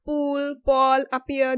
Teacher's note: This is the aspirated P, which is the one which we mostly use